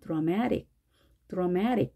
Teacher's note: 그래서 모음이 세 개가 되면, 자, 힘의, 이동이 생깁니다. 그래서 앞에 드라, 아의 액센트가 있는 게 아니라 뒤에 이번에는 액센트가 오게 됩니다. 그래서 앞에는 어로 발음하고 뒤에는 에로 발음해서 드라마틱, 드라마틱. · 그래서 앞에 드라, 아의 액센트가 있는 게 아니라 뒤에 이번에는 액센트가 오게 됩니다. 그래서 앞에는 어로 발음하고 뒤에는 에로 발음해서 드라마틱, 드라마틱. 이렇게 발음이 됩니다.